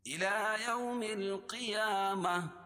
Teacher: گول تا پر وقف کریں گے تو اس کو ہائے ساکنہ سے بدل دیں گے